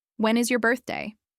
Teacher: Now, it's your turn to say these questions with the falling intonation at the end. Feel your voice gently coming down as you finish the sentence. This helps to signal to the listener that you are asking for information.